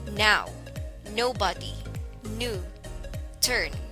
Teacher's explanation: the tongue is pressed against the roof of the mouth just behind the teeth while the lips are kept open the vocal cords are again engaged to produce a sound so